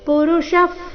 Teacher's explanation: ಎರಡು ಶಬ್ದಗಳ ಕೊನೆಗೆ ವಿಸರ್ಗ ಉಚ್ಚಾರಣೆ ಫ ರೀತಿ